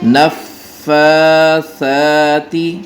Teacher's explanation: فا اور سا دونوں کے اوپر کھڑی زبر ہے، لہٰذا دونوں کو برابر لمبا کریں گے